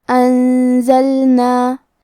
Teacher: اخفاء کا معنی ہے چھپا دینا، تو ہم نون ساکن کو چھپاتے ہوئے اور غنہ کے ساتھ یہ حکم کو ادا کریں گے